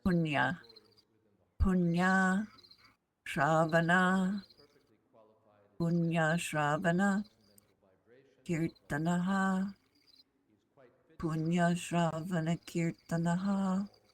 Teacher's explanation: this is the N with your tongue up there in the top of your mouth. Kind of, your tongue is bent backwards a little bit.